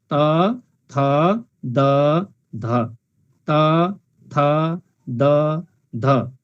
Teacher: उच्चारण गर्दा जिब्राको टुप्पाले दाँतलाई छुन्छ। त्यसैले दाँतलाई जिब्राको टुप्पाले छुने भएकोले यसलाई दन्त्य भनेको, दन्त भनेको दाँत, दन्त्य भनेको दाँतबाट उच्चारण हुने व्यञ्जन भनेको हो।